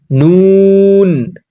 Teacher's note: জীবের আগা এবং ওপরের তালুর সঙ্গে লাগিয়ে উচ্চারিত হয়